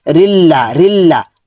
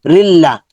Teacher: রিটা লামের সাথে যুক্ত হবে, তাসদিদ যাচ্ছে। রিল্লা তাসদিদ হলো হরফ, 2বার পড়তে হয়।